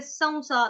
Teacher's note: अभी सौ में क्या है, अनुस्वार का उच्चारण आधा व होगा